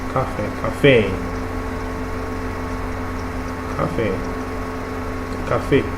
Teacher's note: For instance, the word café is both included in the English and French vocabulary, but their pronunciation is slightly different. The A in the French café sounds sharper and shorter.